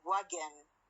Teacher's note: For example, when I say wagon, the N here is not a syllabic one. It is pronounced as schwa N.